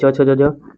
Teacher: तालु हो गया आपका च छ ज झ